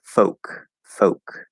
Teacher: a lot of people will say folk without the l color and they'll just use a regular o and that is a perfectly fine variation to make it easier